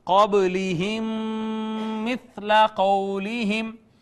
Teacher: میم ساکن کا ما بعد میم آ گیا، یہاں پہ ادغام شفوی ہو گیا